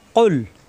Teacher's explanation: কুল জিব্বার গোড়া থেকে উচ্চারণ হবে। কুল যেন না হয়।